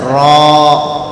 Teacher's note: زبان کا بیچ کا حصہ اوپر کے دانتوں کے لگانے سے نکلتا ہے